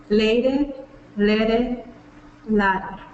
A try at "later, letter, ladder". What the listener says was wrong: So yeah, getting that tongue pulled back for the R at the end is probably going to be important for you. And but those vowels, perfect. You're getting that, the difference between those 3 vowels.